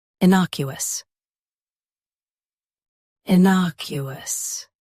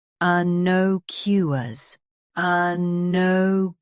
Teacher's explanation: US uses na. UK uses no. Watch that middle sound.